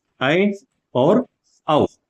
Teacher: अब क्या बच गए, ऐ और औ, इनको बोलकर भी आप देखेंगे तो आप देखेंगे कि एक बार तो मुख विवर खुलता है लेकिन फिर बंद हो जाता है